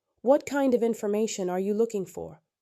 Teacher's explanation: Falling tone makes it sound confident and complete.